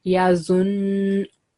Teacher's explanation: So you will read it yazun, because we give 2 second time to this, because noon has shadda, and when you have noon mushaddad or mim mushaddad, we produce 2 second nasal sound as well.